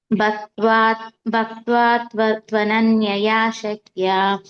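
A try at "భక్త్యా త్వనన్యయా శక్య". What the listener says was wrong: ఇది భక్త్య య య వత్తి ఇది వా వచ్చింది ఓకే సారీ ఇది వత్తే ఉంది మీరు తప్పు చదవలే కరెక్ట్ చదవారు కానీ ఇక్కడ ఉన్నది మీరు చదివారు వ కాదు భక్త్య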